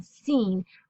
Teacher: is said using the back of our alveolar ridge kind of the top of our mouth here but behind the teeth and we're saying scene and we're